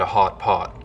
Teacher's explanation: They sound the same up here, just like they do everywhere in the West and in Canada. But one thing you hear a lot up here is a lip-rounded vowel